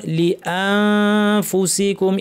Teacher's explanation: নুন সাকিন ফা, দাঁতকে ঠোঁটের উপরে ফা বলার জন্য মুখ রেডি, নাক থেকে গুন্না। লিআনফু বলার সময় প্রচুর আওয়াজ, বাতাস, ফ্যাসফ্যাসে আওয়াজ। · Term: ইখফা